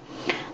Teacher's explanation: middle▁这个▁L▁呢，它也发这个▁O▁音